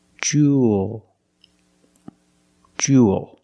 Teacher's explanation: you have the long ooh sound plus the dark L there's no extra vowel